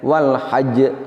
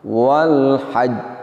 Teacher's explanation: kita mengucapkan walhaj kita langsung menampakan qalqalahnya demikian walhaj seharusnya adalah ditahan sejenak untuk menyempurnakan makhrojnya ingat bahwa di situ terdapat huruf Jim sukun baru dilepaskan sifatnya